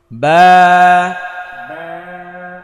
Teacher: ঠোটটা স্বাভাবিক অবস্থায় থাকবে এবং এক আলিফ টান হবে